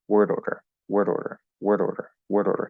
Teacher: same i'm still hitting all the sounds but the exact quality sometimes the d is a little more solid sometimes it's a little looser